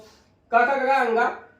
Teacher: ये संस्कृत में कंठ ध्वनियां है, यानी कि कंठ से इसका उच्चारण किया जाता है · ये सभी हिंदी में हो गई कोमल तालव्य, यानी कि उनका उच्चारण कोमल तालु से होता है।